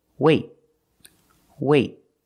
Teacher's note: you put your tongue up in the T position, but you don't release. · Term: stop T